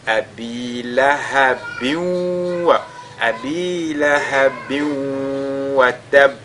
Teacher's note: Ici nous avons tanwin suivi de la lettre waw. Donc les tanwin vont s'incorporer mais de manière partielle. C'est ce qu'on a appelé idgham bin ghunna.